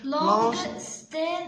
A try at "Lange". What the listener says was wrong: Alors, c'est Lange, c'est pas Langue. Lange.